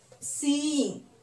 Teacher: Here there are two combination of two vowels E and E, but we cannot say this as a diphthong because in this word this comes under two syllables.